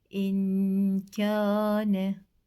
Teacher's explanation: in derken hem genizden getiriyoruz hem de iki saniye boşluk bırakıyoruz